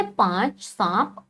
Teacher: ये जब हम उच्चारण करते हैं तो मुख और नाक दोनों से एक साथ निकलता है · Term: चंद्र बिंदु